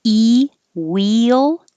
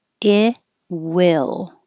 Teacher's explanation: This is E. Your tongue's very high. Wheel.